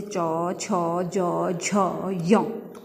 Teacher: जहाँ हमारी जीभ स्पर्श करती है, ऊपरी भाग, मुख का ऊपरी जो भाग होता है वो क्या कहलाता है? तालु।